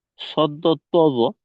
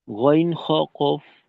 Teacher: সদ, দদ, ত, জ এই 4টা হরফ যতটা মোটা হয়, গইন, খ, কফ এই 3টে হরফ কিন্তু এতটা মোটা হয় না। এদের মাঝে মোটার পরিমাণ কিছুটা কম থাকে। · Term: মোটা হরফ